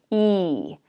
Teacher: The tongue is going to be in the front and high in your mouth. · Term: the vowel E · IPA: /iy/